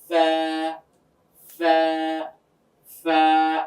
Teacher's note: উপরের দুই দাঁতের আগাটা গিয়ে নিচের ঠোঁটের মাঝ বরাবর লাগবে।